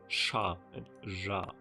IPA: ʃa and ʒa